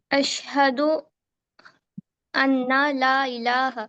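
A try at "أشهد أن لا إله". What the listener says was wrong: اشہد ال, نون کو یہاں پہ نہیں پڑھنا ہے, نون کو یہاں پہ نہیں. جی نون کو یہاں پہ نہیں پڑھنا ہے, یہاں پہ حمزہ کو ڈائریکٹ ملانا ہے لام سے.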